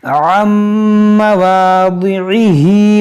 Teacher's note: नून साकिन के बाद मीम है, तो यहाँ पर हम इदगाम करेंगे